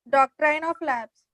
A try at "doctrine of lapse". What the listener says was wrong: doctrine of lapse. Not, that is doctrine, not doctor, doctrine, doctrine. Doctrine.